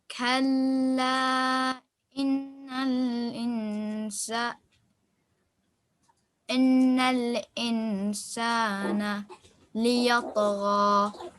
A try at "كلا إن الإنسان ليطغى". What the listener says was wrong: Make sure that you do this as a fatha, okay? This is not a kasra, and every time you've read it, I've heard a kasra sound, okay?